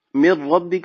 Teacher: نون ساکن کے بعد حروف یرملون میں سے را آ گئی تو یہاں پر ادغام غننے کے بغیر ہوگا،